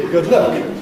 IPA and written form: ˈgəd ˈlək (Good luck)